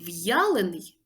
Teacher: виконується а в другому Ні тому слово в'ялений пишемо з апострофом тут є Роздільна вимова буква я позначає два звуки й а